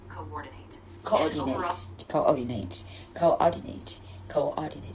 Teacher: when you say coordinate, make sure you stress the second syllable, coordinate.